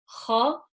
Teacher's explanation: Kha from the top of the throat.